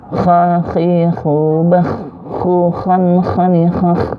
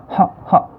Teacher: Huruf kha ini dia agak dikeluarin ya, serak-seraknya gitu ya. Jadi kayak orang buang reak ya.